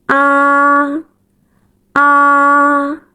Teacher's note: The first tone is a flat tone which is at the highest pitch of your normal speaking voice. You hold it long and keep it stable.